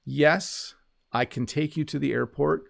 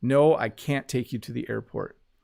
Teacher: we don't really pronounce the T. We do say it a little bit though.